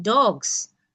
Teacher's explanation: And likewise with the S in dogs because G, the last phone in dog is a voiced sound. So the plural S is pronounced with a voice sound and that is why you get a Z